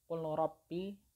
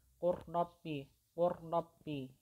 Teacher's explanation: Huruf lamnya tidak dibaca, jadi langsung dimasukkan ke huruf ro-nya atau diidghamkan ke huruf ra-nya. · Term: idgham mutaqaribain